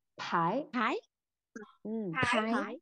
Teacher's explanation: Không phải bái nhá, bật hơi.